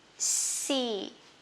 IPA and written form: si: (sea)